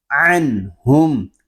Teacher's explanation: عین حلق کے درمیان والے حصے سے ادا ہوگا. جب ہم عین کو ادا کریں گے تو حلق ہمارا تھوڑا سا گھومے گا